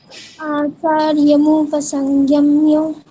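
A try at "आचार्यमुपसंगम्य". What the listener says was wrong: হুম, এখনো স্লাইটলি ওই গিয়া হয়ে যাচ্ছে, ওটা প্র্যাকটিস করবেন।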